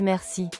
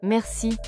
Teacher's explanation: En réalité, c'est merci avec un R doux prononcé au fond de la gorge